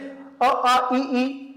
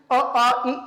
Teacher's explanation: उच्चारित करते समय स्वर तंत्रियों में कंपन होता है, वाइब्रेट टाइप में होता है, उसे क्या बोलेंगे? सघोष।